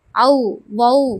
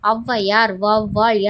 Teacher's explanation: ஔவையார், வௌவால் என சொற்களில் முதலில் வரும்போது தனக்குரிய 2 மாத்திரை அளவிலிருந்து குறைந்து 1½ மாத்திரை அளவில் ஒலிக்கிறது. இவ்வாறு குறைந்து ஒலிக்கும் ஔகாரம் ஔகார குறுக்கம் எனப்படும்.